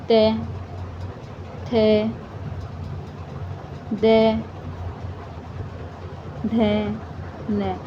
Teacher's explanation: तो जो त वर्ग वाले हैं ना सारे ये दंत के हैं।